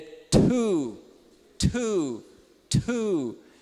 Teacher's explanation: o t não é dental ele é alveolar e ele ainda é aspirado no inglês então esse também